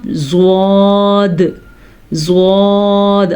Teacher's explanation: اب آپ زواد کو جب ادا کریں گے آپ کو پتہ چلے گا آپ کی زبان کا کنارہ اوپر والی داڑھوں کی جڑ سے لگے گا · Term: حافۃ اللسان